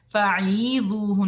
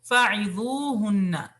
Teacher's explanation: عین کو اتنا لمبا نہیں آپ نے نیچے کھینچنا کہ اس میں یا مدہ ایڈ ہو جائے